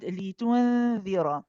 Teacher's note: this is a ikhfa haqiqi, and this is where we hide the noon. So the question is, how do we go about hiding the noon here?